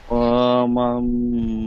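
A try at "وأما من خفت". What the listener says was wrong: ও আমান হয়ে যাচ্ছে। ও আম্মা হামজাটি মিমের সাথে যুক্ত হবে।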